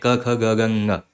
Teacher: पहले वर्ग की बात करें, क ख ग घ ङ, तो वो हमारा कंठ से आता है